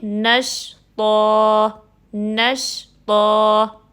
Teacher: 2 زبر کی نارمل تو ساؤنڈ کیا ہوتی ہے طن، لیکن ہم ان 2 زبر کو الف مدہ میں چینج کر کے پڑھیں گے · اب طا ہیوی لیٹر ہے، حروف مستعلیہ میں سے ہے، دیٹ مینس کہ جو ساتھ میں الف مدہ بھی آ رہی ہے اس کو بھی آپ نے ہیوی پڑھنا ہے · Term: وقف بالابدال